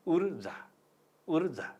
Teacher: यहाँ दीर्घ ऊ छ तर उच्चारणमा ह्रस्व ऊ हुन्छ।